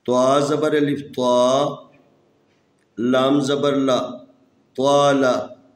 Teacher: یہ طا ہے، اس کو ہمیشہ موٹا پڑھنا ہے، تفخیم پڑھنا ہے۔ یہ حروف استعلاء میں سے ہے، اس کو ہمیشہ موٹا پڑھیں گے۔